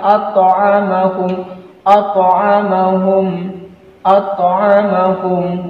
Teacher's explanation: Jadi di sini ada qalqalah, huruf qalqalah to, di sini terdapat huruf qalqalah to. Jadi bacaan daripada huruf qalqalah posisinya ini di tengah, bukan di akhir kalimat. Jadi bacaannya harus sugra, tidak boleh bacaannya besar. Jadi bacaannya alladzi at'amah, tetap dipantulkan at'amahum, at'amahum, at'amahum, bukan atto, atto.